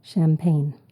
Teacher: We pronounce it as a sh, sh sound, but it starts with a ch.